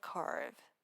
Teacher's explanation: For curve, your tongue must stay pulled back in the R position while your lower lip independently snaps up to hit the V. If you focus too much on your tongue, your lip will get lazy and the V sound will die.